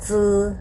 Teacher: เราจะต้องเอาลิ้นดันที่ฟันข้างในนะคะด้านล่างค่ะแล้วค่อยเปล่งเสียงเจอะออกมานะคะ